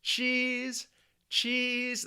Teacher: the long E, your tongue is actually going to be at the highest position for a vowel sound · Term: long E sound